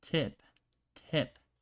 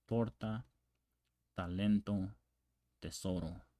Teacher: word right here tip tip is it's very explosive in in in Spanish it's not as explosive and you place the tongue on the back of your front teeth